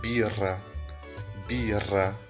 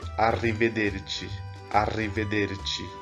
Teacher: quando ela tiver dois R's, ela vai ter um som mais forte ainda, mais vibrante